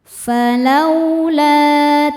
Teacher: Cara bacanya dipanjangkan lamnya dua harakat. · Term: mad thobi'i zohiri